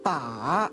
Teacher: The third falls and then rises.